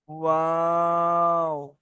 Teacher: দুটো ঠোঁট পুরো বন্ধ হবে না, একটুখানি মাঝখানে ফাঁকা থাকবে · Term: ওয়াওয়ের মাখরাজটা